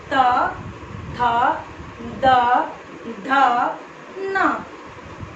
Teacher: त बोलते हैं तो हमारा जीभ जो है हमारा वो दांत में टच करता है